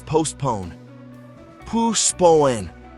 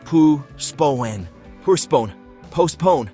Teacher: The T is silent, and the stress is on the second syllable.